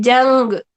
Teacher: جیم جو ہے وہ گاف کے پاس جا رہا ہے اور بیچ میں نون چھپا چھپا سا ادا ہو رہا ہے